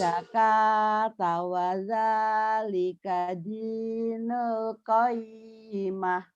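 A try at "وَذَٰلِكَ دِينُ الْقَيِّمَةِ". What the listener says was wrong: yu'tuz zakata wa dzalika dinul qayyimah. Jangan ditahan ya dinul. Alif lam komaria itu idhar. Jangan ditahan di bawah sih. Dinul. Jangan. Idhar komari. Alif lam komaria ya. Sebenarnya baca juga nggak boleh disentak.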